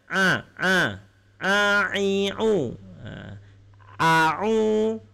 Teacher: Sedangkan ain, ain ini makhrajnya berasal daripada halqum, bagian tengah